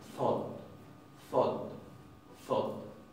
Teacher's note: El asunto es que esta RN, ya vamos a ver cuando veamos más en detalle la parte de fonología, esa RN no se pronuncia ya como RN en islandés. Se pronuncia como una D oclusiva ensordecida, casi como si fuera una T.